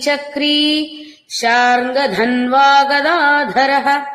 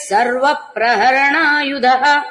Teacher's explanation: సర్వ ప్రహరణాయుధః ధ మహాప్రాణం గదాధరః ధ మహాప్రాణం